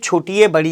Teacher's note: दोनों को मिलाकर छोटी ए बड़ी ए का उच्चारण स्थान बनता है कंठ प्लस तालू या इनको कंठ तालव्य कहा जाएगा